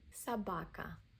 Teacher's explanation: O is unstressed, pronounced as a A.